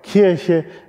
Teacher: weil vor allen Dingen in Norddeutschland das K natürlich behaucht wird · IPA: [ˈkʰirçə]